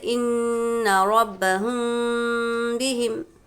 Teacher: میم ساکن دیکھنا ہے کہ جزم والا میم ہو، فوراً اس کے بعد والا حرف دیکھیں گے، اگر اس کے بعد والا حرف با ہے تو ہم یہاں پر غنہ اور اخفاء کے ساتھ ملا کر پڑھیں گے، یعنی اخفاء شفوی کیا ہے؟ میم ساکن کے بعد با آئے تو غنہ اور اخفاء ہوگا، یعنی جب بھی میم ساکن ہو اس طرح سے جزم والا میم اور اس کے بعد والا حرف با ہو تو ہم کو میم کی آواز کو کیا ہے؟